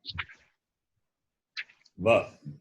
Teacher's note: It is semi-vowel. Va is not only dental. Labial plus dental.